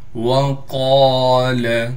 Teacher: قاف کو موٹا بھی کر کے پڑھنا ہے، قاف کے بعد الف ہونے کی وجہ سے قاف کو ایک الف کی مقدار کھینچیں گے